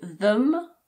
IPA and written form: ðəm (them)